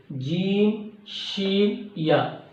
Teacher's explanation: زبان کے درمیان اور اوپر کے تالو کے درمیان سے ادا ہوتا ہے